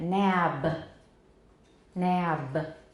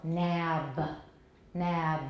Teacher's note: If it's released, this will be nap. And if we release a voiced stop, then we're going to get a little schwa here.